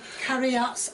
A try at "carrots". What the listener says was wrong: Stop saying carryots. That there's no the word chariot is not in the word carrot.